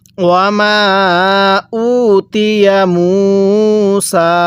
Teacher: ওয়ামা মিমের মধ্যে 3 আলিফ টানতে হবে। ওয়ামা উতিয়া, এই যে হামজায়ের মধ্যে টান দিব, পেশের পরে ওয়াও সাকিন, তাহলে ওয়ামা উতিয়া মুসা।